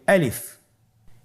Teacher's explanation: গলা এবং মুখের শূন্যস্থান হতে আলিফ হরফটি উচ্চারিত হয়।